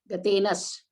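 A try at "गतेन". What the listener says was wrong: No S there, yeah. Sometimes when you're stretching that gatena and you're saying Sri Naradena, it might sound like S joining, but there's no S.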